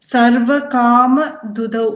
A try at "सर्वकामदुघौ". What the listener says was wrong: you're saying dudhau it is dugdhau g sound dugdhau stanau